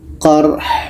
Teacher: Ha ini letaknya di tengah-tengah tenggorokan. Qarh. Dua-duanya tetap dibaca.